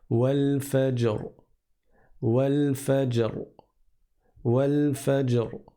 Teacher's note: On va regarder la lettre qui est avant celle-là et on va voir qu'il y a une fatha. Et donc le ra, quand je m'arrête dessus et donc sur un soukoun, je vais le prononcer de façon grave et emphatique